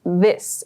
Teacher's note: the word this, we use a voiced TH sound to produce that